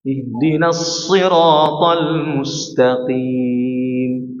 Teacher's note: Kemudian kaf ini tipis. Kalau qaf jangan sampai ada suara anginnya